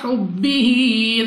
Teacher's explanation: با قلقلہ مشدد ہے تو خوب جماؤ کے ساتھ ادا ہوگا۔